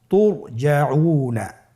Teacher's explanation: র সাকিনের পূর্বে কি এসেছে, পেশ। র সাকিনের পূর্বে পেশ থাকলে অবশ্যই রকে পোর করে পড়তে হবে, মোটা করে পড়তে হবে।